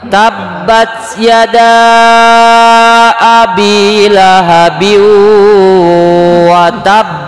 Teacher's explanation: Watab. Jadi setelah neken berhenti sekira-kira 1 huruf tanpa bernapas karena menandakan di situ ada huruf yang bertasydid